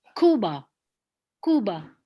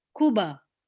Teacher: So you put the stress on the ku, Cuba.